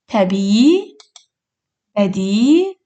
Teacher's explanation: Əgər sözdə iki İ hərfi yanaşı gəlirsə, bir uzun İ səsini eşidirik.